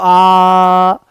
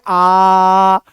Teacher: विवृत स्वर में मुंह पूरा खुल रहा है, जितना मैक्सिमम खुल सकता है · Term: विवृत्त स्वर